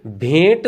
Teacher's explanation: हम भ में और ए जोड़ रहे हैं ठीक है और इस ए का क्या कर रहे हैं नाक और मुख से उच्चारण कर रहे हैं उसके बाद में ट जोड़ रहे हैं उसमें आप ट जोड़ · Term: अनुनासिक